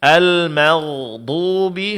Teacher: huruf ghain di sini ditebalkan